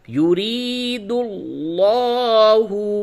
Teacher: پیش دل، لام کھڑا زبر لا، ہا پیش ہو، یرید اللہ، لفظ اللہ کے لام سے قبل پیش ہے، اس لام کو پر کر کے موٹی آواز سے پڑھیے